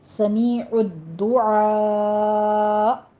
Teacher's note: حمزہ ساکن ہو رہا ہے، یہاں پہ تھوڑا سا جھٹکا دے کر وقف کریں گے